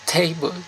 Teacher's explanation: you pronounce table, you sound like t with more air